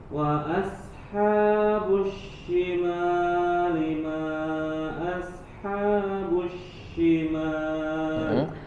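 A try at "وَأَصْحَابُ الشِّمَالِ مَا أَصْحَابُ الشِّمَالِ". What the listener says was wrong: Tebalkan huruf sadnya. Wa ashab. Kemudian haknya, perhatikan bacaan-bacaan panjang yang dua harokat, tidak boleh dilebihkan. Wa ashabus syimali. Habu sama syima di situ dua harokat saja. Nah, huruf syinnya, tafasinya hilang.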